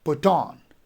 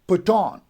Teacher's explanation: put would be unstressed and on would be stress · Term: iambic